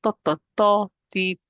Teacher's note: Touching the roof of the mouth, but the part that's closer to my teeth. And I'm touching not the tip of my tongue.